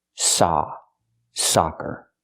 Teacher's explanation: For soccer, we need the open sound ah, like hot and stop.